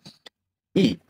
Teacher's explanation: Mulut akan dibuka luas dan lidah akan berada di posisi rendah dan ia akan bergerak kepada huruf vokal I yang berbunyi E. Lidah akan naik ke hadapan berada di bawah gigi dan bibir direndang diregangkan sedikit seperti senyum.